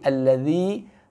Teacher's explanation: sentuhkan ujung lidah kita dengan ujung gigi seri atas